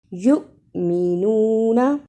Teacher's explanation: یؤمنون، اسے یومنون نہیں پڑھنا، یا پیش حمزہ یو، جس حمزہ پر جزم ہو اس کو تھوڑا جھٹکا لگا کر پڑھتے ہیں